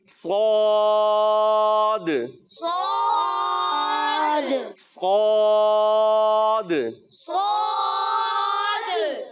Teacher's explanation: صاد کو موٹا کرنا ہے اور دال میں آخر میں کلکلا بھی ہوگا